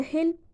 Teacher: And in the hill, the tongue tip is in the same place, but the back of the tongue is raised, resulting in a dark L